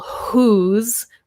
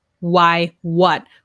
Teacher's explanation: whose, we have the h sound, right? But why, what, we have the w sound, just W sound.